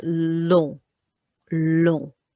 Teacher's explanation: And long, although it's the spelling is the same as English, the on makes that piggy nose sound